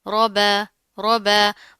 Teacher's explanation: را موٹا ہے، اوپر زبر آ رہی ہے تو اس کو موٹا پڑھیں گے، لیکن اس چیز کا آپ نے خیال رکھنا، آگے با ہے وہ بریک ہے، اس کو موٹا نہیں کرنا، ٹھیک ہے۔